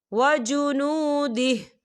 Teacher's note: وقف کی صورت میں ہا جو ہے ساکن ہو جائے گا